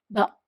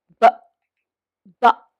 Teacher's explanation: With a voiced stop, we make the sound with our vocal cords, and they start vibrating before the stop is released